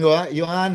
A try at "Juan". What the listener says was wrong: They don't say the J on.